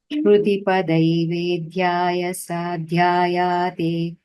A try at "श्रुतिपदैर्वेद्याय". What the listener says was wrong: श्रुतिपदैर्वेद्याय There is no dirgha on ya. Vedyaya is sufficient. Sadhyayate